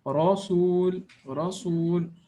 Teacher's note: this ra has a fatha on it, so the fatha makes it strong or full mouth.